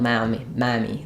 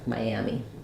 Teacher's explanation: as I move from the I to the a, my, we have that y sound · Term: vowel to vowel linking